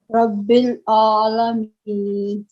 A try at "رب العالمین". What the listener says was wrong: تھوڑا سا لمبا ہو گیا. اور رب العالمین.